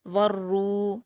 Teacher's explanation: تنزل الملائکۃ واو پر حرکت ہے، آگے را جو ہے وہ حروف شمسی میں سے ہے اس لیے واو کو را سے ملا دیں گے. را پر پیش کی حرکت ہے اور واو مدہ ہے، 2 حرکات کھینچ کر پور پڑھیں گے. والروح ہا پر حرکت جلد پڑھیں گے.